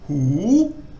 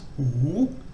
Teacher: So it starts off normally and then rises. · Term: rising tone